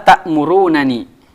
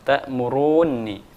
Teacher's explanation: karena ada dua nun bertemu maka dijadikan jadi satu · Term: idgham